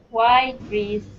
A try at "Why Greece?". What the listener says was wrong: Lower. Lower. You're speaking like this. It sounds like a robot. Why Greece? Try like this. Why Greece? Exaggerate it. Why Greece?